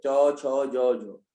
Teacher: तालु में जीभ हमारी सीधा लग रही है